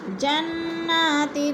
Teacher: جنات، تن میں اخفا، 2 زیر تنوین کے بعد تا حروف اخفا میں سے آگے تو ادھر اخفا کریں گے، آواز کو ناک میں چھپا کر پڑھیں گے